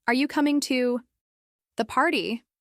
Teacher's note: For instance, if you ask, "Are you coming to the party?" Your voice should rise at the end of the sentence. This rise in pitch signals to the listener that you're expecting an answer. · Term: rising intonation